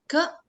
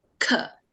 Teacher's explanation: Generally, we get confused, like, when we are chanting ka and kha, we tend to put an additional ka for Mahaprana, but that's not the case. Ka is Alpa Prana, kha is Mahaprana.